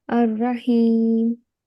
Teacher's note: There is no jerking sound on the ha